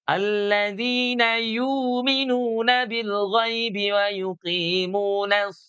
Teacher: karena huruf shadnya adalah huruf istilah maka dia ikut menebalkan huruf setelahnya